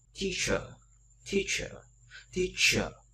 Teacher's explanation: Teacher âm ơ ngắn, ơ ngắn nó sẽ phát âm rất là mạnh như vậy.